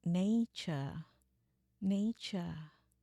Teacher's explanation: Jadinya cuman nature nature ya r-nya enggak ada.